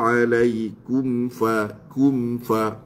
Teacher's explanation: Ini macam biasalah mim dengan fa izhar syafawi yang perlu dikuatkan izharnya